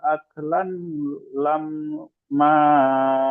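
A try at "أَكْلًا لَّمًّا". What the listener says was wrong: আক লান হয়ে গেল, একসাথে যখন টেনে পড়ছেন আক লান পড়েছেন, আক লাল লাম মা। লাম নুন জাবার লান হয়, এখানে লাম নুন নেই, লাম আছে, লাম লাম জাবার লাল হবে, আক লাল। লা নয়, লাল, লামটি লামে যুক্ত করেন।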